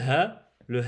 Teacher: le ha sort du fond de la gorge tout en bas